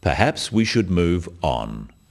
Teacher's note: The first one, perhaps we should move on, is phrased as a suggestion, but it is said in a firm way with a falling intonation at the end.